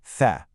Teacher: For example, some letters are called lathawiyya. For these, the tip of your tongue just gently touches the edge of your top teeth. Listen to this letter, th.